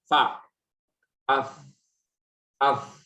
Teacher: Mengalirnya udara, artinya banyak udara yang tersentuh dengan tangan kanan. Getaran nggak banyak, tapi udara banyak keluar. Itu dia huruf mahmus.